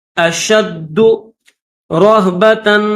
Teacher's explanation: شین کو دال کے ساتھ ملائیں گے اور زور لگا کر اس کو سختی کے ساتھ پڑھیں گے